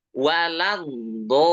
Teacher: Huruf dot tebal ya. Waladdo tebal, panjang sampai 6 harokat karena ini mad lazim ya.